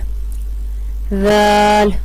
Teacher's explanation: زال کا مخرج ہے زبان کی نوک اور ثنایا علیہ کا سرا